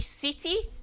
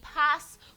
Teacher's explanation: Voiceless alveolar fricative, made by putting the tip of the tongue nearly on the alveolar ridge.